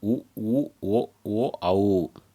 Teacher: உதடுகளை குவித்து ஒலிப்பதனால் தோன்றும் எழுத்துக்கள்